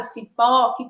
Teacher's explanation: a gente percebe que a sílaba tônica é a sílaba pó, que também é a última